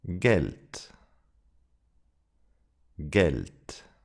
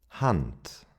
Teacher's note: The final D sounds like a T.